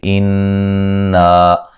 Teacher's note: مہم، یہاں میم ساکن کا اظہار ہے، غنہ نہیں کریں گے۔ انا، یہاں نون مشدد پہ غنہ ضروری ہے، غنے کی مقدار 1 الف کے برابر ہوتی ہے اور یہ الف مدہ ہے۔